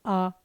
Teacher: आ पूरा मुंह खुला है तो ये विवृत है, तो ना तो ये संवृत है ना अर्धसंवृत।